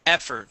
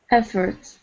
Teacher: Stress at the beginning